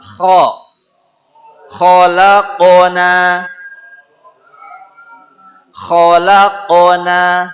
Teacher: Kha ngagerok tina tikoro, tenggorokan.